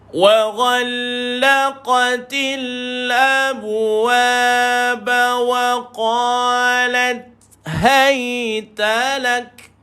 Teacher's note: sukun ni pada ta dan kaf sukun, ingat ada hams pada dia.